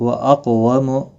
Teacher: قاف مستعلیہ ہے، پر پڑا جائے گا اور ساکن بھی ہے، اس پر قلقلہ بھی ہوگا